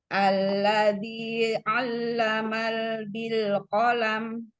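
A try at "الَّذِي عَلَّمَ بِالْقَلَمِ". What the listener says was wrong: Lama, bukan alamal. Allama bil qalam. Nah, bedakan hamzah dengan ainnya. Allama ainnya. Alladzi alladzi hamzah dulu. Alladzi 'allama bil qalam.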